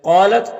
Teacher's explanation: قاف حروف مستعلیہ میں سے پر پڑھیں گے ، الف مدہ ہے، ایک الف کے برابر کھینچیں گے، یا